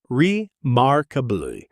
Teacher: Pronunciation, 4 syllables, remarkably. The stress is on the second syllable, and that R sound in mark. Should be strong and American. Really let your tongue curl back.